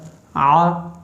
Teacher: यह हलक के दरमियान वाले हिस्से से अदा होता है। · अगला हर्फ है आइन। ये हलक के दरमियान वाले हिस्से से अदा होता है। आ, इसमें आवाज़ आएगी, आ की आवाज़ ना आए।